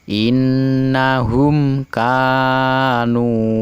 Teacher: mim mati bertemu dengan huruf Kaf tidak boleh dibaca dengung karena ini adalah Idhar syafawi nah alangkah lebih jelasnya Yuk kita